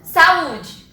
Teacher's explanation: O meu U é a minha sílaba tônica. Ele é a sílaba mais forte da minha palavra.